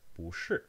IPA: ʂɻ̩˥˩